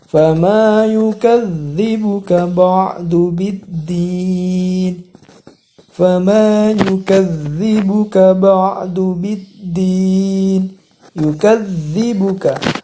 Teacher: Di sini dzal ada tasydidnya, jadi harus ditekan.